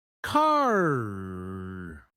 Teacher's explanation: American English is what we call rottic, meaning the R sound is emphasized even at the end of words. In contrast, in British English, that R is often silent.